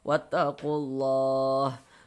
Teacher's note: Kemudian lafaz Allah dibaca panjang. Ini namanya adalah mad arid lisukun. Namun pada awalnya ini namanya mad thabi'i.